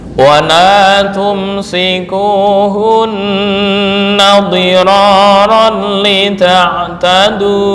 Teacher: Dhira tafkhim ya. Kenapa? Karena ra berharokat fathah.